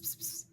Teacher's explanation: And I wonder what it is about cats that makes us make this sort of ps thing, this sort of plosive followed by a sibilant